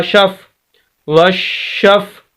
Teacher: شین کو سخت کر کے آواز کو روک کر اور پھر اسی شین کو آگے ساکن حرف یعنی فا کے ساتھ ملائیں گے